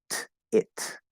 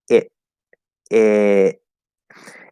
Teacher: So if it doesn't connect to anything, we'll do a glottal stop. It.